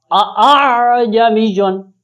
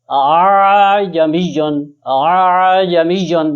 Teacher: اس کے برعکس جو تسہیل ہے اس میں دوسرے حمزے کی آواز کو تھوڑا سا نرمی سے پڑھ دیتے ہیں